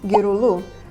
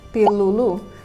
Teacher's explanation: the syllables 'ri' and 'li' changed to 'ru' and 'lu' in response to the plural suffix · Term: vowel harmony